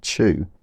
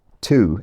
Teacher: word in its own right we would expect it to be chew if you have a y coalescing accent like me or two if you have a y dropping accent